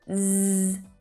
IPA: z